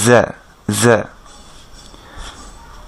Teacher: সিন এবং জা same স্টাইলে হবে, অর্থাৎ জিহ্বাটা ফ্ল্যাট থাকবে।